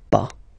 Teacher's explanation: as usual, final S is not pronounced, so it's pas.